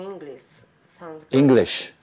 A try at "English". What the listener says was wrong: English. No, no, you're vibrating. English. Because sometimes you go s, and sometimes and here you're starting to vibrate because everything's vibrating now. So forward and no vibrate.